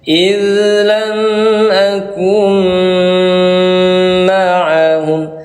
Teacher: Ya, contohnya ayah bunda, nun mati bertemu mim warnanya merah salah satunya, maka menghasilkan cara baca namanya idgham bi gunnah tajwidnya. Cara baca idgham bi gunnah bagaimana? Ditahan dua ketukan.